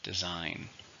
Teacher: 2 syllables, stresses on the second.